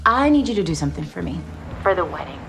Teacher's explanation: La forma débil de la palabra for es con una schwa y suena como fur.